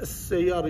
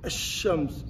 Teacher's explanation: لام الشمسية they write it but they will not pronounce.